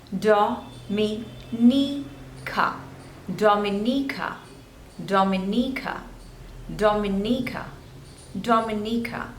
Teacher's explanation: This one is Dominica. There are total 4 syllables and you have to stress on the third one.